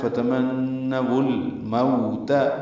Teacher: نون مشدد پہ غنہ ہے، واو کو لام سے ملانا ہے، فتمنوا الموت، مو وولین ہے، ہونٹوں کی نا تمام گلائی سے ادا کریں گے۔